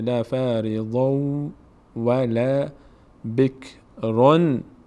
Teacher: به جای نون واو تلفظ کنیم، چون ادغام صورت میگیره، میشه لا فریضون ولا بکرون.